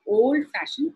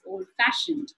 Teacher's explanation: compound word like old-fashioned the F sound is stressed more